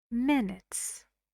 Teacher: And the stress is on the first syllable.